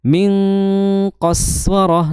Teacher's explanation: Kalau kita mudahkan dalam memahami bahwa nun sukun ketemu qaf itu bunyinya ang, kemudian disertai dengan menaiknya pangkal lidah ya, menimbulkan suara tebal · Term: ikhfa